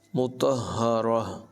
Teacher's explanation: تو کو ہا سے ملائیں گے اور ہا کی آواز جو ہے یہ حلق سے نکلے گی ، مطہرہ، اور آخر میں بھی ہا کو ظاہر کریں گے،